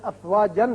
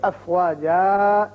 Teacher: جب وقف کرنا ہو تو پھر افواجن نہیں پڑھیں گے بلکہ افواجا اس طریقے سے